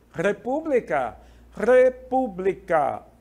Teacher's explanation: o assento cai sobre a terceira sílaba